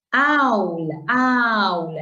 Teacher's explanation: el acento está en la A, eso es diptongo